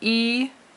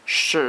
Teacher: the first tone and the second tone, are both longer tones